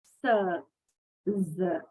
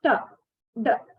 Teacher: Unlike sir and z, t and d are not pronounced by making a continuous stream of air pass through the mouth. Okay. So when we pronounce sir and z, until we pronounce the word, air is coming out.